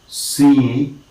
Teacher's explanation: right and the e sound is it is a pure vowel it is pure vowel because it is just having a single tongue position · is sir e and we know that he the long sound the front close unrounded long sound · Say, for example, in the word see, we have in transcription, C is S, E, and we know that E, the long sound, the front, close, unrounded long sound is a single phoneme. It is a single phoneme, and it is what is known as a monophthong.